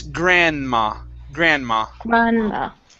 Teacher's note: in this word, the D here is silent.